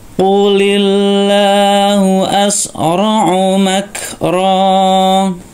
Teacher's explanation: Ro-nya dibaca panjang, mat iwat ya, karena berada di tempat pemberhentian. · Kafnya hamas ya, ada sedikit udara keluar.